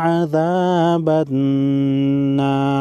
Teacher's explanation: وقف کی صورت میں را ساکن پڑھیں گے. را ساکن سے پہلے والے حرف پر زبر ہے تو را ساکن کو موٹا پڑھیں گے